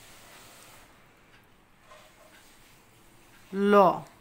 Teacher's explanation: ল এই ধ্বনি উচ্চারণের সময় জিহ্বার অগ্রভাগ দন্তমূলে গিয়ে লাগে, এরপরে দুই পাশ দিয়ে বাতাস বের হয়। এই জন্যে লকে বলা হয় পার্শ্বিক ধ্বনি।